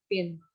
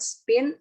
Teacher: The allophone in pin is aspirated, causing it to sound almost like a P, whereas the allophone in spin is not